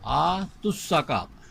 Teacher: اسی طرح پر آتوا الزکاۃ، آتو اور الزکاۃ دونوں کو اکٹھا کریں گے تو یہ الزکاۃ کا زا بھی ساکن، آتو کا واو بھی ساکن، اس واو کو گرا کے پڑھیں گے